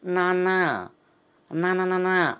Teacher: నాలుకని దంత మూలాన్ని తగులుతాం దంతాన్ని కాకుండా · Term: నకారం